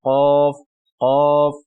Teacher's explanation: जबान की जाड़ को कवे के करीब कवे के इब्तिदा पर जो है लगाने से ये हर्फ अदा होता है कफ कफ यानी इसको थोड़ा मोटा भारी कह ले इस तरह · کے بعد قوف ہے، دو نقطوں والی، اس کو آپ نے زبان کی جڑ کو کوے کے قریب، کوے کے ابتدا پر جو ہے لگانے سے یہ حرف ادا ہوتا ہے ، قوف قوف، یعنی اس کو تھوڑا موٹا بھاری کہہ لیں،